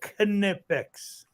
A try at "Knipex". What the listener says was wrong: The K is not silent. It's German.